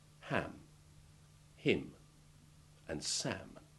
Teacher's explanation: a final m sound can be made without reopening the lips especially where the previous sound is a short vowel the air seeming just to disappear into the nasal cavities